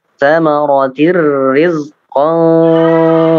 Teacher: Min ikhfa samaratir rizqan, ya. Samaratin itu tidak panjang, langsung masuk ke huruf ro, ya. Idgham bila gunnah.